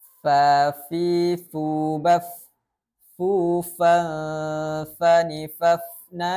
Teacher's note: ada ketika kita membacakan huruf Fa selanjutnya sifat huruf Fa adalah istifal atau rendah pangkal lidahnya tidak terangkatnya pangkal lidah sehingga huruf Fa ini termasuk huruf yang tipis · sifat huruf fa adalah istifal atau rendah pangkal lidahnya, tidak terangkatnya pangkal lidah, sehingga huruf fa ini termasuk huruf yang tipis. Sifat selanjutnya pada huruf fa yakninya adalah infitah, aula tengah lidahnya terbuka sehingga tidak terkurungnya suara antara lidah dan langit-langit.